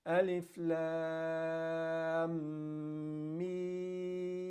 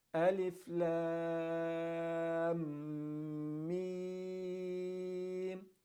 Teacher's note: you're going to make all the letters that have the mud symbol on top of them, you're going to make them 6 harakat long